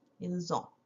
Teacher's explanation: Now remember, because we have the S here, and this starts with a vowel, we kind of say the S, but it sounds like a Z. It's called a liaison.